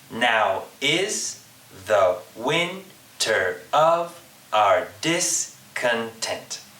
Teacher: Each beat has an unstressed syllable and a stressed syllable. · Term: iambic pentameter